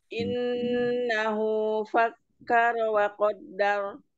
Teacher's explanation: Kafnya ditekan dulu, ini ada tasdidnya.